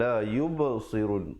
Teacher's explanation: Jadi waqafkan dengan la yubsirun. Yub merupakan qalqalah, ada pantulan. Kemudian sirun, jangan baca sirun jadi huruf sin.